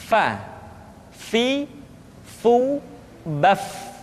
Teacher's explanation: Diucapkan dengan menyentuhkan ujung dua gigi seri kita bagian atas dengan bibir bawah bagian dalam. Fa. Seperti kita mengucapkan huruf F di dalam huruf Latin. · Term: huruf fa